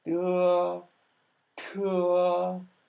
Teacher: the difference between de and te is in the aspiration.